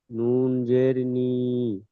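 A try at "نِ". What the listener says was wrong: জি, নুন জের নয়, নুন ইয়া জের নি।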